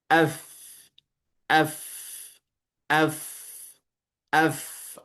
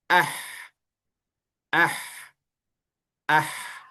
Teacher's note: Fa ketika disukunkan dia akan mengalir udara. Diucapkan fa af. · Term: hames